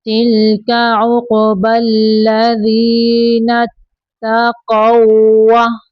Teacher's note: اگر یہاں پہ وقف نہیں کرنا تو ہم یہ جو قاف ہے اس کو اس واو کے اندر ملائیں گے